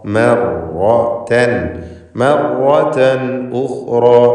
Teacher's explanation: തൻ എന്നതിലെ തൻവീൻ ഇൽഹാർ ഹൽഖി നൽകി മണിക്കാതെ വെളിവാക്കണം, ശേഷം ഹംസ ഉള്ളതുകൊണ്ട് ഉഖ്റ.